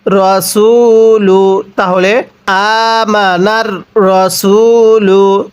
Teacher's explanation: পেশের পরে ওয়াও সাকিন এক আলিফ টানতে হয়। লাম পেশ লু, রসুলু, তাহলে আমানার রসুলু।